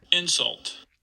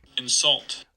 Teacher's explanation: So in the noun version, we get stress on the first syllable. In the verb version, we get stress on the second syllable